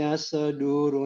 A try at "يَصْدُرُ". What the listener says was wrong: Don't shake the صاد. صاد is not one of the letters of qalqala. Don't say يصدر. يصدر.